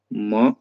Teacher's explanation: म अनुनासिक है क्योंकि मुख और नासिका दोनों मिलकर के उच्चारित होता है